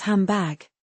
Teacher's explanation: The mouth anticipates the b. It's easier to produce mb than nb. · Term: assimilation